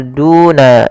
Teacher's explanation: Dammah bertemu wau panjangnya dua harakat. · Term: mad thabi'i